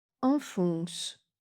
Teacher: Il s'agissait du numéro 4. Premier en, A nasal, deuxième on, O nasal.